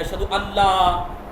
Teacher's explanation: جیسے ان ہے اس کے بعد لا ہے، اس کو ایک کر کے لام کو تجدید دے دیا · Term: ادغام